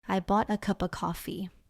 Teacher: many natural connections, like bought a cup of sounding almost like bought a cuppa. Native speakers say it quickly.